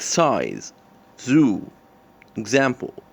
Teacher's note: through example as described as follows in the place of articulation it is alveolar and manner of articulation it is fricative and in voicing it is voiced